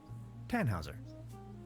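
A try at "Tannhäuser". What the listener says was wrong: We'd pronounce it Tannhauser with an umlaut.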